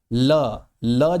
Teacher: ल बोलने में भी हमारी जो जीभ है वो कहां टकराती है? तो भैया दंत मूल में टकराती है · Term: दंत मूल व्यंजन